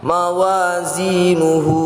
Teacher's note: wazi merupakan bacaan Mad Thobi'i yang panjangnya dua harakat · Hu adalah bacaan mad silah qasirah. Jadi dibaca panjang 2 harokat. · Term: mad tabi'i